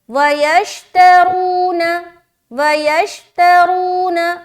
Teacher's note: रा को मोटा करते हुए वाव मद्दा करना है